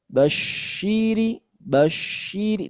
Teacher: bibir kita tidak kita keluarkan artinya tidak kita monyongkan. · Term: syin